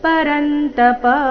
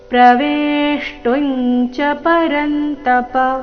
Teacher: ಕೊನೆಗೆ ಪ ರಸ್ವ ಅದನ್ನ ದೀರ್ಘ ಮಾಡಬಾರದು